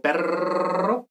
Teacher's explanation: se le puede llamar así pero realmente es una percusiva porque es una percusiva porque es un pequeño golpe de la lengua